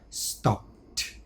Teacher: the p is unvoiced, so the sound becomes a t. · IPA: stɒpt